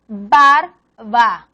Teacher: B, fuerte, B más suave. Por ejemplo, barba. En medio de palabra la B es más suave.